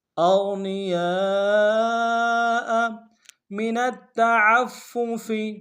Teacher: موٹا ادا کریں گے، نون کو نم سے ادا کریں گے، یا کے ساتھ الف مدہ ہے، الف مدہ کے اوپر مد اصلی ہے، کم سے کم 3 الف مقدار میں کھینچیں گے ، حمزہ کو نم سے ادا کریں گے۔ اغنیاء من التعفف،